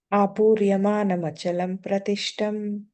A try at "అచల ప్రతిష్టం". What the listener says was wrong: అక్కడ అచలం లేదుగా, అచల ప్రతిష్టం.